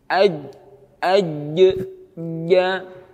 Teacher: Kalau jim, makhrajnya tengah lidah dinaikkan ke langit-langit dengan cara ditempelkan tengah lidah tersebut ke tulang langit-langit atas.